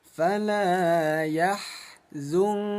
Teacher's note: Ingat hukum ikhfa ayah bunda dibaca samar ya disamarkan selama dua harakat. Jadi bunyi nunnya diganti menjadi bunyi eng